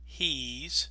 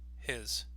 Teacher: we do keep that E sound in he's. But again, his is a shorter word.